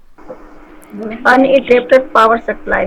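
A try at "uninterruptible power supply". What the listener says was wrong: एक अनइंटरप्टेड हो गया और एक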